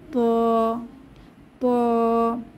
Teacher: ত একটি ভারী হরফ এটা উচ্চারণের সময় মুখটি গোল হয়ে যাবে